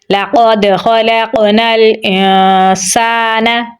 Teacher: حمزہ کو نون کے ساتھ ملائیں گے کیونکہ نون کے اوپر بھی جزم ہے، تو نون کے بعد حروف اخفا میں سے سین ہے تو یہاں پر ہم اخفا کریں گے۔ آگے الف مدہ ہے تو یہاں پر ہم لمبا پڑھیں گے۔